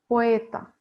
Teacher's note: Кај поета, акцентот исто стои на вториот слог од крајот на зборот, велиме дека стои на дифтонгот, поточно на вториот дел од дифтонгот, на ето, таму најубаво се слуша.